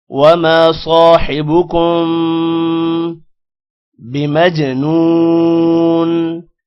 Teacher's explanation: وما میم کے بعد الف ہے، لمبا کریں گے. صاد موٹا ہوگا، صاد کے بعد الف ہے، اس کو بھی لمبا کریں گے. حبکم کسی بھی ورڈ کو یہاں پر لمبا نہیں کرنا، میم پر غنہ ہوگا.